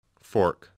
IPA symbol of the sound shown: ɔ: